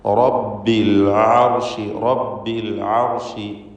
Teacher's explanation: അൽ അർഷ്, അവിടെയും റാഹിന് തഫ്ഖീമാണ്. ഐന് വ്യക്തമായി മഖ്റജിൽ നിന്ന് ഉച്ചരിക്കണം, തൊണ്ടയുടെ മധ്യമാണ്.